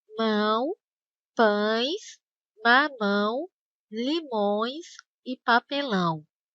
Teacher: ao dizer essas palavras, o ar precisa sair também pelo nariz. Por isso, esses ditongos são chamados de ditongos nasais.